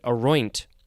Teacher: So the second syllable is emphasized, and it has an NT at the end.